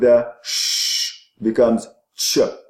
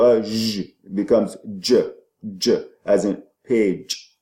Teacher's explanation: the t combined with the sh becomes ch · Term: affricate sounds